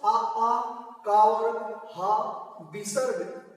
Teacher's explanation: आ का वर्ग, हा, विसर्ग, ये सभी कंठ से उच्चरित होते हैं